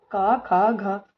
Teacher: ख घ मतलब कि ये जो है वो कंठ ध्वनि है घ का जो उच्चार स्थान है वो कौन सा है वो कंठ है